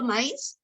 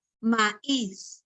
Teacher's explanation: cuando tú pronuncias la palabra, por ejemplo, maíz, el acento está en la vocal cerrada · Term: hiato acentual